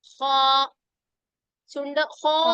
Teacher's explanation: ഹോ എന്ന് പറയുമ്പോ ചുണ്ട് കൂർത്ത് വന്നിട്ടുണ്ട്, ഇടയിൽ വാവിന്റെ ഉച്ചാരണം വന്നിട്ടുണ്ട്.